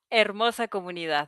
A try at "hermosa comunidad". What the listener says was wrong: Ah, hermosa, without the H, right? You don't have the H in Spanish. Yeah, it's a silent H. So, hermosa comunidad.